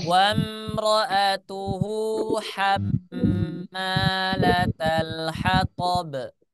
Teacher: Ulangi, saya masih mendengar yang ini ada masih membaca hanya ha tebal. Hanya ha yang tipis ya, ha tipis. Makhrajnya di wastul halqi, di tengah tenggorokan ya.